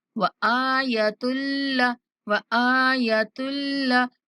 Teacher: حمزہ کو کھینچیں گے اور تا کی تنوین کو لام کے ساتھ ملاتے ہوئے بغیر غنہ کے ادا کریں گے